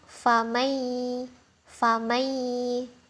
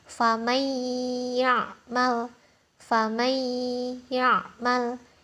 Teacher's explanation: kita masuk bacaan nun sukun nya ini masuk ke huruf ya kemudian didengungkan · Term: Idgham Bighunnah